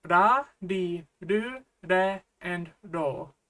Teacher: Don't forget that the Japanese R sound is somewhat between an R and an L.